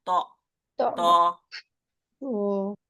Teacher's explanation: कहने में जबान की नोक ऊपर के सामने के दो दांतों की जड़ में लग रही है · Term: त का मखरज